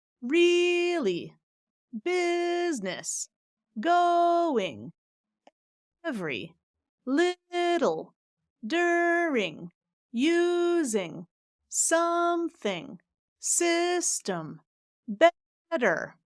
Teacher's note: our top 10 two syllable words where I'm stressing the first syllable